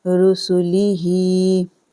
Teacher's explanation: ہا خرا زیر ہی کو کھینچیں گے 2 سیکنڈ کے لیے